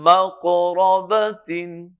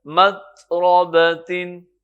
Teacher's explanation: اب دیکھیے فرق، یہاں پہ قاف ہے اور یہاں پہ تا ہے، باقی حرف وہی ہے. یہاں پہ قاف پہ قلقلہ ہوگا، آواز اچھلے گی، لیکن تا پہ آواز بالکل نہیں